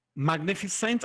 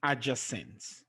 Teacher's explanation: the stress is placed on the third syllable from the end